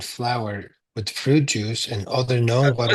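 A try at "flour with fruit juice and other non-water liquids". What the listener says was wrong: reread this and be careful with the pause. It sounded like Hametz was different from leavening. make a clear pause when you see a period.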